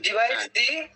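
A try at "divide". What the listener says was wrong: ডিভাইস না ডিভাইড, ভালো করে দেখেন। ডিভাইড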